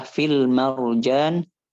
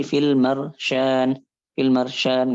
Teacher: Di sini beliau berbicara tentang huruf jim di mana kalau huruf jim itu dia lemah maka dia nanti suaranya itu akan bercampur dengan syin bahkan nanti berubah jadi syin · Karena kita enggak menguatkan huruf jim. Karena jim itu kita tahu bahwasanya dia keluar dari tengah lidah kemudian ditempelkan ke langit-langit atas nempel iltisak gitu. Tapi kalau syin sama ya dia enggak nempel.